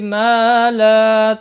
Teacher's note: ما الف مدہ ہے، لا بھی الف مدہ ہے، ایک ایک الف کے برابر کھینچ کر پڑھیں گے